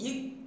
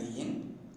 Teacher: In the production of ik, the air escapes through the mouth, but in the production of ing, the air escapes through the nose.